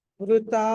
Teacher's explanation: వృత వాకి రుకారము వృత తాకి దీర్ఘం వృత